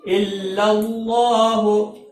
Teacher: حرکات میں سے کسی حرکت کو کھینچنا نہیں ہے۔ الا اللہ، اللہ کے لام کو موٹا پڑا جائے گا